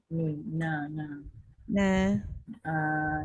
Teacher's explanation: Istifal lah. Pangkal lidah ke bawah.